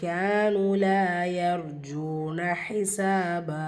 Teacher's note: கேப்ல அலிஃப் மத்தா இருக்கு இரண்டு ஹரக்கத் அளவு நீட்டம் கொடுத்து ஓதணும் நூன்ல வாவ் மத்தா இருக்கு இங்கயும் இரண்டு ஹரக்கத் அளவு நீட்டம் கொடுத்து ஓதணும்